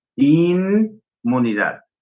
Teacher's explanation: Nosotros pronunciamos una N y luego una M. Acá la M no ejerce influencia sobre la N.